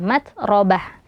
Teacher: nafas ya Mat juga di situ ada ta marbutah Yang mana ketika wakaf atau berhenti di TA itu tanya dibaca seperti ha